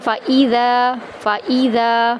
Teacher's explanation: فَإِذَا فا اور حمزہ کو لمبا نہیں کریں گے، ذا کو ایک الف کے برابر لمبا کریں گے اور نرمی کے ساتھ ادا کریں گے